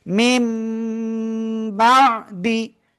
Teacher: নুন সাকিনের পরে বা যদি পাই, তাহলে আমরা এই মিম দ্বারা উচ্চারণটা পরিবর্তন করে পড়ব। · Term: ইকলাব